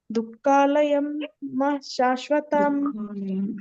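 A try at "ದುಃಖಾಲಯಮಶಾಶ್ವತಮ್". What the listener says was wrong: ಕಾಲಯಂ ಅಶಾಶ್ವತಂ. ಅಶಾಶ್ವತಂ ಮಾತಾಜಿ ಅಲ್ಲಿ ಶಾಶ್ವತಂ ಹೇಳ್ಬೇಡಿ, ಅಶಾಶ್ವತಂ ಬರ್ಬೇಕು ಅಲ್ಲಿ.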